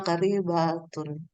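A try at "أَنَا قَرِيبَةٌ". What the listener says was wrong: Nah, panjang mbaknya? Ana qaribatan ya. Yang panjang cuma roh.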